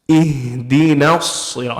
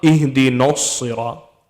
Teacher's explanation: the noon stays how it is. Don't change the noon. It's the sad that's supposed to be heavy.